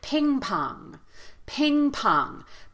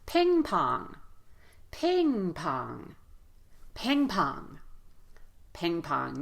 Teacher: in the word ping pong, we're going to give equal stress to both syllables here. So we're not going to feel that strong and weak.